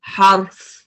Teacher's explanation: اب را پہ سکون ہے، اس سے پہلے فتح ہے تو کیا ہوگا، را ہیوی ہوگا